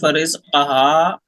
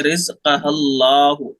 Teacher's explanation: हा को डायरेक्ट लाम से मिला देंगे